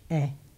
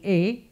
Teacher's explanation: like in the American E-H, eh, okay? Closed would be A, but without a diphthong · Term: open vowels